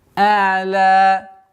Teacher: При остановке аннулируется удлинительный звук, остается в размере двух огласовок удлинения.